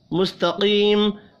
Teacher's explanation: اہدنا الصراط المستقیم، اہدنا الصراط صاد را اور طاء پر پڑھے جائیں گے، الف مدہ ایک الف کے برابر کھینچ کر پڑھیں گے، مستقیم قاف حروف مستعلیہ ہے پر پڑھا جائے گا